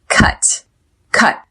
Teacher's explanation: There is a stop T on the word cut.